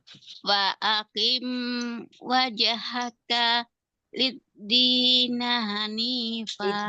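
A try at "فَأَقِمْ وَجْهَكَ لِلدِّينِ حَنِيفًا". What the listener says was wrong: Fa'aqim wajhaka. Nah, di wajhakanya jangan berhenti. Jadinya dia kayak saktah. Wajhaka lid-dini. Jangan wajhaka lid-dini. Nah, kayak ada saktah jadinya.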